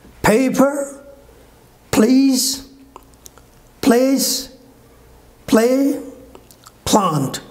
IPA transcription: ˈpeɪpə pliːz pleɪs pleɪ plɑːnt